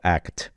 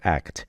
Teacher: It's a really full T sound rather than just a dental sound.